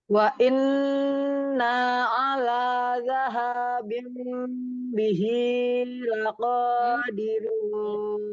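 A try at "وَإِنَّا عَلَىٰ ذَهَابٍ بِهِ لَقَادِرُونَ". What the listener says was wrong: Bihi, hati-hati bihi, 2 harokat saja.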